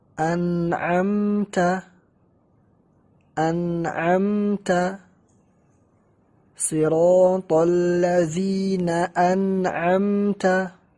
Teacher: Jauh antara makhraj nun as-sakinah dan makhraj halq, makhraj 6 huruf ini. Karena nun as-sakinah atau tanwin makhrajnya di ujung lisan, sedangkan huruf 6 ini makhrajnya di tenggorokan. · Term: izhar